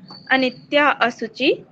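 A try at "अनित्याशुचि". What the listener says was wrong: फिर अ नहीं जो बोलना, फिर तो या बन गया ना ये, अनित्य सुचि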